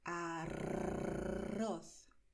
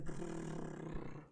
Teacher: Bueno, pues en español, si ves la letra R al principio de la palabra o dos R's dentro de la palabra, pronunciarás utilizando la punta de la lengua. Tienes que expulsar el aire y cuando expulsas el aire, tu lengua vibra, la punta de la lengua, ¿vale? Y es esa expulsión del aire con la vibración de la lengua lo que hará que escuches ese sonido, ¿vale? · La lengua tiembla, la lengua hace brrr, ¿vale? Y si te cuesta pronunciarlo así, intenta pensar en el sonido de un trueno o del motor de un coche, ¿vale?